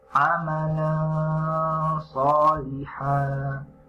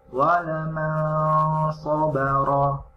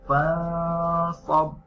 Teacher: dibaca tebal dengan cara pangkal lidah naik mendekati langit dan bibir itu sedikit tertutup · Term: ikhfa